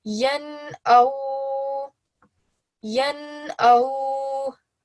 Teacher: we will make sure that we give this noon no nasal sound and we read it fully.